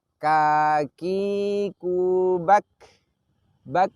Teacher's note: Pada huruf kaf ini kita pun bisa merasakan bahwa ketika sukun kita mempraktekkan syiddah yaitu menahan nafas terlebih dahulu, baru kita mempraktekkan hames yaitu mengalirkan nafas